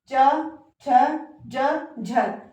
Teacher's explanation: जब हम च बोलते हैं तो हमारी जो जीभ है वो ऊपर की तरफ तालु की तरफ जो है टच होती है। तालु की तरफ जो टच होती है तभी हम जो है च झ इन व्यंजनों का जो है उच्चारण कर पाते हैं। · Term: ताल्वय, तालव्य